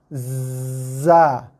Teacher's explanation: Huruf zai hujung lidah sentuh belakang gigi bawah.